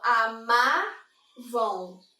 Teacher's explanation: Então, se eu falo amavam, Eu tenho essa tonicidade na penúltima